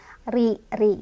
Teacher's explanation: Tapi ketika misal kita mau melanjutkan nih, karena ini lam alif juga boleh melanjutkan sebenarnya ya, wal asri, maka sirinya ini jadi punya sifat tarkik atau tipis karena ro-nya berbaris kasrah. Jadi bacanya tipis atau mulutnya agak mundur sambil sedikit meringis.